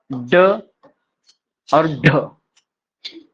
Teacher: जीभ को 2 बार स्पर्श करने से उत्पन्न होने का कारण द्विस्पृष्ट व्यंजन तथा जीभ के मूर्धा पर मारने से उत्पन्न होने के कारण ताड़नजात व्यंजन भी कहलाता है।